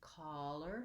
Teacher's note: my jaw is a little bit more open my lips are rounded